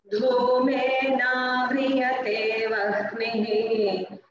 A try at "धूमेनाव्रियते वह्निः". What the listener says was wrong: Bagini, that is not vahnihi. E vannihi. Always the down figure should come first when you are chanting. Dhumena vriyate vannihi.